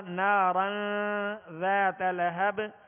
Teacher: نارن ذات، یہاں تنوین ہے را کے اوپر 2 زبر کی اور آگے ذال حروف اخفا میں سے، ذال حروف اخفا میں سے، لہذا نارن ذات لہب. یہاں پر نارن پر غنہ کریں گے یعنی آواز ناک میں لے جا کر چھپائیں گے اور اخفا کا غنہ کریں گے ایک الف کی مقدار میں.